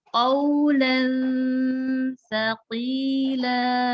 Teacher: Sa itu ada di punggung ujung lidah, punggungnya menempel pada ujung gigi seri atas 2.